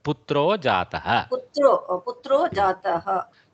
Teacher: There is a visarga, but it has become a O sound here.